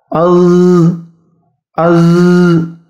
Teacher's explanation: huruf Zai juga tidak boleh dikeluarkan angin karena sifatnya jahar